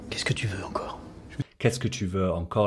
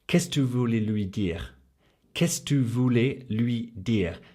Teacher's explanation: So here, Qu'est-ce que tu became Qu'est-ce tu. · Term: smushed together